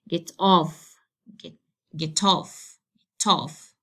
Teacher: this phrasal verb, I have to stress the second part, which is off